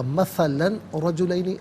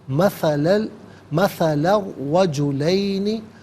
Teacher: مثلاً میں لام پر دو زبر کی تنوین، اسے را کے ساتھ ملائیں گے، را کی آواز کو ادا کیا جائے گا ، یہاں پر یرملون کا قاعدہ اپلائی ہوگا، مثلاً رجلین غلط،